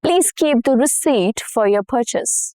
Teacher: the P stayed in spelling but disappeared in sound.